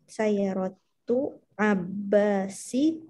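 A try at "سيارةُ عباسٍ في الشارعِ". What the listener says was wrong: Abbasin. Pakai tanwin Mbak ini. Abbasin.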